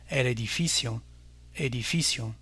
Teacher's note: Encore, l'avant-dernière syllabe est accentuée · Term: accent tonique